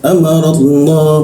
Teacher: Di huruf Allah itu lam bertasdidnya kita baca menjadi seperti huruf O ya. Amarallah, posisinya lamnya kembali harus benar di belakang posisi sini di dalam.